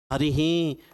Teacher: ई के बाद विसर्ग है तो विसर्ग का उच्चारण स्थान तालु।